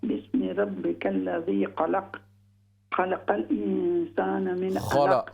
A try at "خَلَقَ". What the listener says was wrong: خلق خا کو موٹا کیجیے. خلق الانسان.